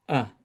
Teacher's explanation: not maybe not a and the third one is uh uh without pushing without stress in the middle of the mouth just uh so a now let me U let's dive in